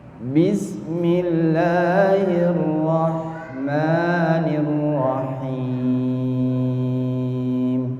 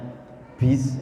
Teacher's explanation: Huruf ba-nya sebetulnya tidak boleh keluar nafas, Pak. Misalnya bis itu salah. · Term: huruf jahar